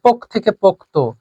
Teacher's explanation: তারপরে আমাদের দিশ থেকে দিশা, পোক থেকে পোক্ত, এখানে তয়ের পরে কোনো স্বরধ্বনি ছিল না, বাট যখন আপনি পোক্ত বলবেন তখন তয়ের সঙ্গে শেষে স্বরধ্বনি এসে গেল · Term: অন্ত স্বরাগম